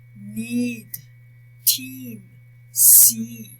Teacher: The sound of these monophthongs is made high in the mouth